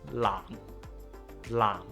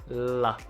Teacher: place the tip of your tongue against the alveolar ridge that's behind your upper teeth, just like the alveolar dental onsets that we have discussed in the previous video.